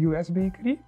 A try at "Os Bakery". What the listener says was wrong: Oh, je zei US, maar het is Os Bakery.